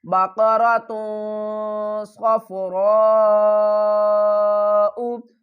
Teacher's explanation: اخفا بھی کریں گے، تا کی آواز کو چھپا کر پڑھیں گے